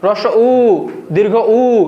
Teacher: তুমি হ্রস্ব এবং দীর্ঘ বলতে গেলে তোমার ঠোঁটটা গোলাকার হয়ে যাচ্ছে। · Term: ওষ্ঠ বর্ণ